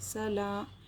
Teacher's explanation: لام پر کھڑا زبر ہے، کھڑا زبر برابر ہوتا ہے الف مدہ کے، ایک الف کے برابر کھینچ کر پڑھیں گے.